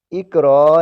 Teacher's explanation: اس الف کو الف نہیں حمزہ پڑھتے ہیں کیونکہ وہ جھٹکے سے پڑھا جاتا ہے۔ سو یہاں دیکھیں، اقرا نہیں پڑھیں گے نرمی سے بلکہ جھٹکا دیں گے، اقرا۔